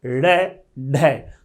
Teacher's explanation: जैसे आप बोलोगे ड़ ढ, तो जीभ ऊपर जाएगी ड़ और फिर तुरंत फेंकेगी ड़ ढ। जीभ ऊपर जाएगी, मुख की छत मूर्धा को टच करेगी और झटके से नीचे फेंक जाएगी। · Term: उच्छिप्त